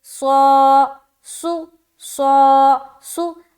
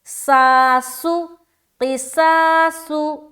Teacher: اب یہاں پر کوئی پڑھ دے ساسو، کیا پڑھ دے، ساسو، قصاصو، ایسا پڑھ دے، یعنی کہ باریکی کے ساتھ ادا کرے تو اس نے حرف صاد کو سین سے چینج کر دیا